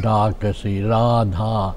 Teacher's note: ব্রজবুলিটা খানিকটা সংস্কৃত উচ্চারণে, কেমন তাতে দীর্ঘ স্বরগুলো দীর্ঘ, যেমন ডাকাসি, রাধা, এরকম কেমন।